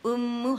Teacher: ٹو counts کا غنہ ہوتا ہے لیکن ڈھائی تین تک چلا جاتا ہے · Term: غنہ مشدد